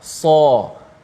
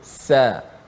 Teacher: Bunyi sad itu jangan tertukar dengan huruf sin, walaupun bunyi seakan sama dengan huruf sin, tetapi beza je sin dengan sad. Sad itu tebal, sin tu nipis. Sin kita sebut sebagai sa.